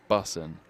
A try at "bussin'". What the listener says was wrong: I don't think you pronounce the G, so bussin'. Bussin'. Yeah, like you're bussing it to school.